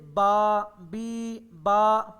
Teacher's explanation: منہ کے اگلے حصے سے، ہونٹوں کے، دونوں ہونٹوں کے آپس میں ملنے سے بی ادا ہوتا ہے۔ آپ کے جہاں سے بی ادا ہوتا ہے بالکل وہیں سے با ادا ہوتا ہے۔ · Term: با کا مخرج